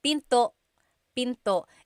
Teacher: don't forget the glottal stop. Don't forget to stop the sound at the end.